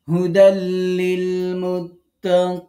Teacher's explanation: আমরা এখানে নুনে পরিপূর্ণ সাকিন দিয়ে অক্ফ করলাম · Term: অক্ফ বিল ইসকান